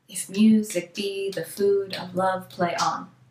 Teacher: That means that he typically wrote unrhymed and he would use 10 syllables in each line, and the spoken stress would be on the second syllable, every second syllable. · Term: iambic pentameter